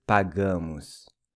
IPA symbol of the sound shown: u